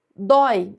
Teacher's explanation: Aqui nós temos o ditongo aberto oi em uma palavra que é monossílaba.